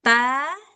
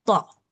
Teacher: mereka ini sama-sama keluar dari ujung lidah ketemu dengan dua gigi seri kita bagian belakang